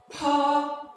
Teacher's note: When you're pronouncing it, there is a kind of strong air that comes out with the pronunciation. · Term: aspirated sound